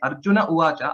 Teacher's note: Arjunaha Uvacha was there earlier. The Visarga has dropped. So that is the sandhi.